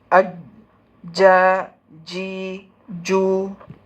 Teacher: Hard പാലറ്റും വസത്തുൽ ലിസാനും തമ്മിൽ ഹിറ്റ് ചെയ്തിട്ട് ആണ് ജീം വരുന്നത്. തീരെ ഗ്യാപ്പ് ഉണ്ടാവില്ല ഇവിടെ.